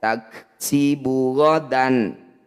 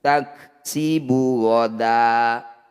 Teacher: bunyi fathah tanwin kita ganti jadi fathah panjang. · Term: mad iwad